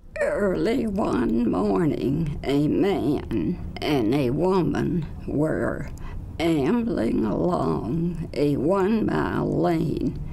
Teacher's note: The AD form of spasmodic dysphonia plus a tremor component with it. So you can hear the tremor in her voice on top of the adduction, the vocal folds snapping shut.